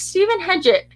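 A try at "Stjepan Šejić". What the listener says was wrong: Steppen. There's no H in it. It's Steppen. But yeah, his name's spelled, it's like STJEPAN. So it's like Steppen.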